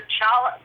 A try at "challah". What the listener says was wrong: Don't pronounce the C.